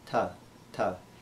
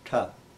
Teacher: The dental consonants are made a little different than English also by touching the tip of the tongue to the teeth. Ta, ta. It's a softer sound in English.